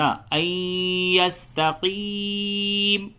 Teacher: آیت نمبر 28، لِمَن شَاءَ مِنكُمْ أَن يَسْتَقِيمَ، لِمَن شَاءَ مِنكُمْ أَن يَسْتَقِيمَ۔ یہ نون ساکن کے بعد حرف یرملون آیا ہے، یہاں پہ یا ہے حرف یرملون میں سے، تو ادغام ہوگا مع الغنہ ہوگا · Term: ادغام مع الغنہ